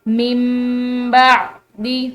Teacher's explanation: یہ نون ساکن جو ہے میم سے بدلنے کے بعد ہم اس نون ساکن کو بالکل نہیں پڑھیں گے، بلکہ یہ میم کی آواز آئے گی